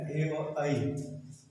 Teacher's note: जीभ का स्पर्श कंठ के साथ तालु से भी होता है, तो कंठ और तालु से उच्चारित होने वाले जो वर्ण संयुक्त वर्ण है ए और आई, इनको कंठ तालव्य कहा जाता है।